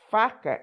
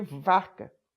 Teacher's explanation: Ela troca muito o F com o V, porque as duas só se diferenciam porque uma é surda e outra é sonora.